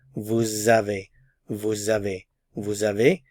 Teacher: Normally with the vous, we don't pronounce the S, we just say vous. However, since a vowel follows, there's liaison, and we pronounce the S, and remember, it sounds like an English Z sound, z. Vous avez, vous avez, vous avez, and we don't pronounce the final consonant, vous avez, vous avez.